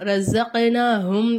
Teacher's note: காஃப் குத்துபஜத்து கல்கலாவுடைய எழுத்து. நம்ம அப்ப இதை என்ன செய்யணும், அசைச்சி ஓதணும். ரஸக் அப்படின்னு சொல்லணும்.